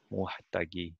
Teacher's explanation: the second syllable is not stressed, and the third is a little bit more stressed again, muhtagi, even though the last syllable is not so stressed.